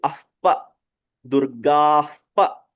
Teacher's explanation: if there is a pa, then the pronunciation will be ahpa, Durgahpa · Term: visarga